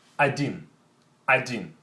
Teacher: So letter O sounds as A.